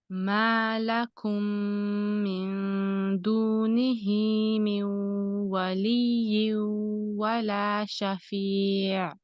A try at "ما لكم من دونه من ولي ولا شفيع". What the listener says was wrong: Also, when you say waliyun, we need to include the ghunna.